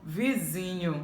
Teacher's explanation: paroxítona palavra em que a sílaba tônica é a penúltima